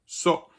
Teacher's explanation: the word so in English is pronounced with a voiceless S, with a S sound